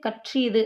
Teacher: அதற்குரிய அரை மாத்திரை அளவுல இருந்து குறைஞ்சு கால் மாத்திரை அளவுக்கு ஒலிக்கும் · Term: ஆயுத குறுக்கம்